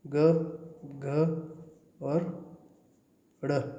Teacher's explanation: ये ग, घ और ड़ बोलने से आपके गले में कंपन होता है। आप बोल के देख लीजिए, क और ख में नहीं होता है। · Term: घोष